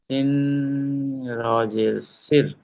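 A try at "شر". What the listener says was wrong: সিন রোয়াজে না, শিন রোয়া জবর শির হয়।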